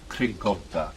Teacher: that first sound made at the very back of the mouth. It's called a uvular plosive.